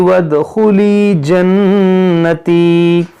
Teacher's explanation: یہاں پر دیکھیں خالی الف ہے، اگر ملا کر پڑھیں گے تو یہ حمزہ وصلی گر جائے گا، نہیں پڑھیں گے اس الف کو.